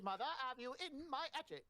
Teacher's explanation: No H. The Cockney accent. You drop the H at the front.